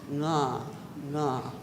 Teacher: the NG sound, which is nga, the back of the throat. Also, often interchanged, meaning one or the other is used in different villages.